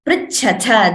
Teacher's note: That tha mahaprana in the end should be very clear. Sometimes we have two mahapranas like cha and tha here.